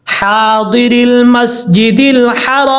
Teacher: ہا کے آگے الف ہے، لمبا کریں گے ایک الف کی مقدار ، یہ ہا بریک ہے، اس کو بھاری ساؤنڈ کے ساتھ